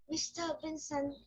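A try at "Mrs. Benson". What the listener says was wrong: Good boy. But MRS is not Mr., that is Mrs. Mrs, okay? Yeah, Mrs. MR is Mr., but MRS is Mrs.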